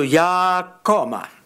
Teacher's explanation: koma has a high tone on ya, and also there's a falling tone on koma, which shows you it's from a high that got that extra low tone.